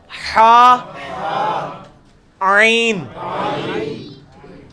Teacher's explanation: وسط حلق سے نکلے گا حا، عین